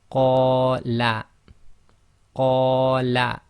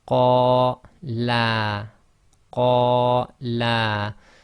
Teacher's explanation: So that's 2 long on the qa, and la is 1 long.